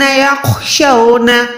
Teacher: خو کو حلق کے اوپر والے حصے سے ادا کریں، اور یہ موٹا حروف بھی ہے، حروف مستعلیہ میں سے آتا ہے۔